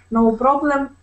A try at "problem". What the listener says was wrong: Let's make sure that when we pronounce that word, instead of saying problem and rolling that R, we say problem. Problem. Let's practice the sound Problem. Okay, instead of pro, okay, we want to say problem. Okay, problem.